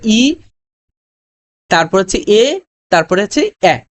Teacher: সম্মুখ স্বরধ্বনি হচ্ছে ই, তারপর হচ্ছে এ, তারপরে হচ্ছে এ, এই তিনটা